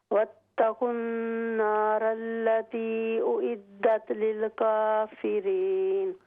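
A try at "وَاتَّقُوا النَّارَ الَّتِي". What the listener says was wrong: वत्तकुन नारल्लती, मत को लंबा कीजिए।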